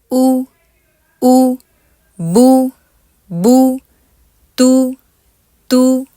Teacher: दम्मा में आपने उ की आवाज रखनी है उसको ओ नहीं करना